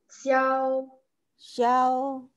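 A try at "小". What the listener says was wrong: Bukan. Xiao itu tiga.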